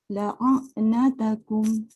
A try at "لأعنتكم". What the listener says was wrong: Dia permulaan tu hamzah dulu baru ain. Jadi permulaan tu jangan tekan dulu. Masuk a je lah. La'a. Baru tekan ain.